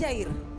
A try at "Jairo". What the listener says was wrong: Faltó una O, faltó, es una O nada más lo que faltaba.